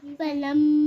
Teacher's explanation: پہلے میم کا غنہ 2 کاؤنٹ, کتنا؟ 2 کا. پھر الف مدہ کا جو مد ہے 4 کاؤنٹ.